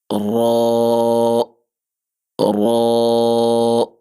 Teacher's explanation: رو کی آواز موٹی ہے اور آپ کی زبان کی نوک کی جو بیک ہے وہ آپ کے سامنے اوپر والے جو دانت ہیں ان کے مسوڑوں کے ساتھ لگے گی، تو وہاں سے موٹی آواز میں را را۔